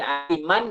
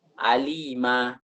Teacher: Nunnya diganti dengan alif. Dipanjangkan dengan panjang 2 harakatain. 2 harakat. Wa yulhaqu bit tabi'i. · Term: mad iwad